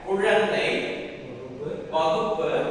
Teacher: இந்த உகரம் முதல்ல வரும்பொழுதும் இடையில வரும்பொழுதும் தனக்குண்டான மாத்திரை அளவில இருந்து குறையாம ஒரு மாத்திரை அளவாகவே ஒளிக்குது